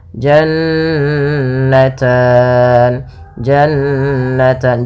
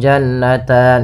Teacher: Jan ada Nun berharakat tasdid maka ini kita namakan dengan gunah bacaan gunah yaitu suara nunnya ditahan dua harakat